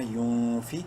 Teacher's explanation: نون ساکن کے بعد فا حروف حلقی میں سے نہیں ہے اخفا کریں گے اس نون میں یون فی قاف واو پیش کو منہ بھر کے پڑھتے ہوئے